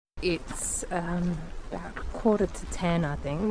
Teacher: And when she says the 'k' sound in 'think', it's actually really soft.